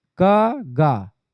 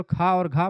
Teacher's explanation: गा जो होगा आपका अल्प प्राण में आएगा और घा महाप्राण में आएगा। क गा, ठीक है, ये आपका आएगा अल्प प्राण में और खा और घा महाप्राण में आ जाएगा। ये चीज ध्यान रख रहे हैं ना आप, महाप्राण में अधिक हवा निकलती है।